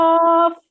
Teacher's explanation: زبان کی جڑ اور اس کے مقابل تالو کے نرم حصے سے زبان لگ رہی ہے